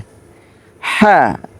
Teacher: গলার মাঝখান থেকে হা